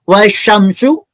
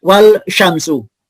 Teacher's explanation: bacaan lam nya tidak terdengar atau tidak jelas jadi hurufnya dimasukkan ke huruf sesudah huruf lam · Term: Idgham Syamsiah